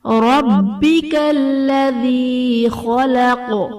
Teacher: با حرف قلقلہ مشدد ہے، یہاں پر خوب جماؤں کے ساتھ پڑھیں گے